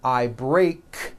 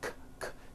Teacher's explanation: Break ends with an unvoiced K sound. K, k. There's no voicing on that K.